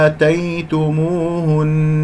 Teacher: أقف على نون فيها غنة للدلالة على أنه هذه نون مشددة